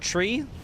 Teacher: you actually say with a CH sound, not a T sound.